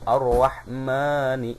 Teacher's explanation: Ini mad tabi'i atau mad asli, dan dibacanya harus dua harokat